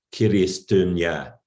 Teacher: he renders Christian in Agulis dialect as kiristunya, with all front vowels in the form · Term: epenthetic harmony